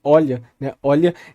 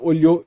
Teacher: a força talvez da sílaba seria no começo, olha, né, olha, deslocado para o final, olhou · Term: deslocamento da força